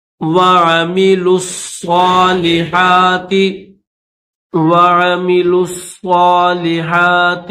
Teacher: اس واو کو نہیں پڑھیں گے، ڈائریکٹ لام کو صاد کے ساتھ ملا کر پڑھیں گے